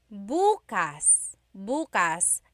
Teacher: the second syllable that means open if you say buas buas emphasis is on the first syllable that means tomorrow